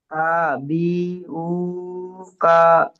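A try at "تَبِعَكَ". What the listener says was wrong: উ নয় আ কা।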